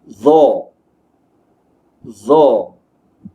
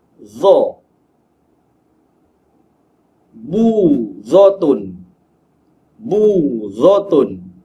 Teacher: Huruf zo disebut dengan menemukan hujung lidah kita dengan hujung gigi atas. Sebelum menyebut huruf zo, pastikan lidah kita di hujungnya menyentuh di bahagian hujung gigi.